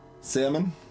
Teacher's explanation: L is silent in my Salmon pronunciation. Yeah, that feels weird throwing the L in there for me.